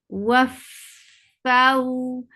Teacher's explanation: you're attaching the edge of your upper two teeth on the lower lip. F and then this vow is h lean. · And as you will touch fa, you will engage the right makhraj of fa, and that is when you're attaching the edge of your upper two teeth on the lower lip.